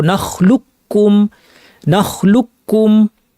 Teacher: লাম গিয়ে সরাসরি কাফকে ধরবে নাখলুকুম এ কফকে পড়া হয় না · আসলে এখানে হয়েছে কফটা কাফে কনভার্ট হয়ে দুই কাফ একসাথে তাজদি যুক্ত একটা কাফে পরিণত হয়েছে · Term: ইদগামুল মুতাকারিবাইন